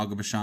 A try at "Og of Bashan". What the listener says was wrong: Og of Bashan. You always say Og of Bashan, like Aga. It's Og of Bashan. But the way you say it sounds like Aga.